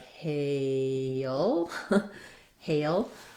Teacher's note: we do say it as a one-syllable word but almost thinking of it as two syllables